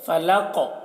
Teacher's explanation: فلق قاف کو موٹا کر کے پڑھیں گے اور قاف میں قلقلہ کر رہے ہیں۔ فلق دیکھیے قاف کی آواز ٹکرا رہی ہے، جنبش ہو رہی ہے اس کی آواز میں